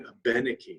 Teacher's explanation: we stress the third syllable from the end of the word